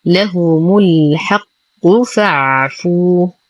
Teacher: لدينا واو ساكنة ما قبلها مضموم فهو مد طبيعي بمقدار حركتين